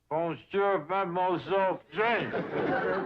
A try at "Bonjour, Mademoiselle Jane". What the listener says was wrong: That's very good, except for the mwah sound. It must be soft.